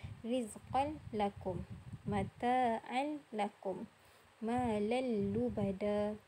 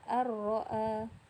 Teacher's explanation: Okey, kalau kita translate ataupun ni dalam bahasa Melayu, idgham bila gunnah memasukkan tanpa dengung. Nun mati dan tanwin bertemu dengan huruf lam dan ra, kita masukkan dia tanpa dengung.